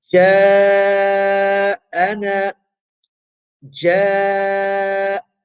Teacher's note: If it is in the middle of a word, then its duration is the time it takes to pronounce 4 or 5 vowels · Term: al-maddul muttasil